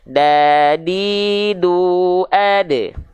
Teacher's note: huruf dal itu ujung lidah disentuhkan ke pangkal gigi seri atas kita